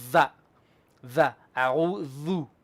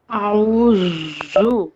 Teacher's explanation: They're more like, you can say it between your teeth. You put your tongue between your teeth.